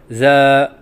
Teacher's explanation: بعض بچے زا کی ادائیگی کے وقت سیٹی نہیں کرتے، یہ غلط ہیں